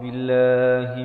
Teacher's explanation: Billah dibaca nipis 2 harakat.